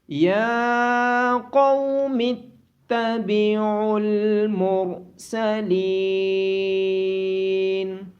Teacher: قوف کو موٹی آواز کے ساتھ پڑھا جائے گا، عین کی آواز گلے کے درمیان سے آئے گی، اور را کو بھی موٹی آواز کے ساتھ پڑھا جائے گا۔